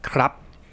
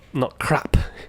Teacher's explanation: And if you don't say it too well, it sort of sounds like you're saying crap in English, but the Thai, they're not saying the last consonant, they're just saying it as a dead syllable